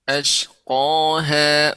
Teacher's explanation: Qanya lebih dalam lagi dan lebih tebal.